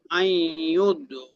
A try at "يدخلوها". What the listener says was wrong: ইউদ না, ইয়াদ, ইয়াদ।